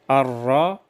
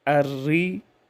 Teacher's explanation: را پر جب زبر اور پیش ہو تو اسے ہم پر ادا کریں گے، اور جب زیر ہو تو ہم اسے باریک ادا کریں گے